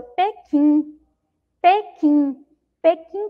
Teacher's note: Pequim, Pequim, Pequim também nós não ouvimos ali o som do U. Percebam a vogal E, ó, junto com essa sílaba, tá?